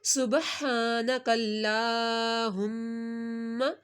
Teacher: लाम के ऊपर खड़ा मादा एक अलिफ के बराबर खींचा, मीम के ऊपर तशदीद है, मीम के ऊपर हमने गुन्ना करना है